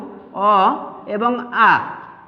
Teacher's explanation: স্বরবর্ণের মধ্যে প্রথম যে দুটো স্বরধ্বনি রয়েছে, এই স্বরধ্বনি দুটো অ এবং আ। এই ধ্বনি দুটো উচ্চারণ হবে কণ্ঠ বা জিহ্বামূলে